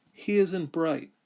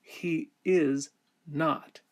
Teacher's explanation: we elide the vowel and contract the words together